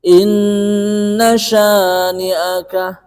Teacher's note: Inna itu merupakan gunnah yang tasdid ya, yang asli. Jadi ini dipanjangkan, beda dengan idgham bi gunnah.